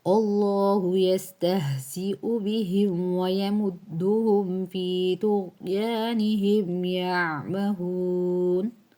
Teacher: اللہ موٹا، ٹھیک ہے، لفظ اللہ سے پہلے زبر